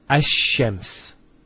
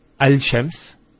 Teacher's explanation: And what happens instead is the Lam is pronounced as a Sheen. So there's actually a shadda here.